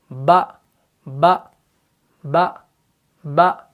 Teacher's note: ایئر فلو جو ہے وہ کٹ ہو جاتا ہے اور آواز کے اندر کیا ہے؟ بلندی ہے